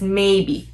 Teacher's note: I'll just call it the monotone. Very even, it's very flat